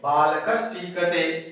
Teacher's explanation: विसर्ग के स्थान पर मूर्धन्य श हो गया बालकश्टीकते, ये मूर्धन्य श हो गया।